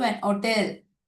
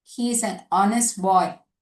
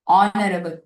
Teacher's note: Here in these words, the letter H is silent. We are pronouncing with only the vowel sound. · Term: silent H